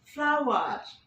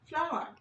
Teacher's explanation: অর্থাৎ আমেরিকানরা পুরোপুরি উচ্চারণে বলছে ফ্লাওয়ার, বাট ব্রিটিশরা বলছে ফ্লাওয়ার। আরটাকে নিচ্ছে না, ওরা হালকা করে মুখের মধ্যে রেখে দিচ্ছে।